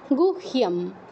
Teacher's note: এটা গুইহ নয়, এটা গুহ্য, আগে হ উচ্চারণ হবে, পরে ইয়